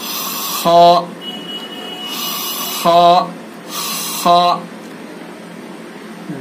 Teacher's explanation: خا کو حلق کا جو منہ کی طرف والا حصہ ہے وہاں سے ادا کیا جائے گا